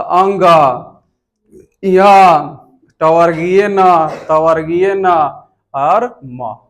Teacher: ये पंचम वर्ण जो होता है वह नासिका से उच्चारित किया जाता है, इसीलिए इसको नासिक के वर्ण कहते हैं।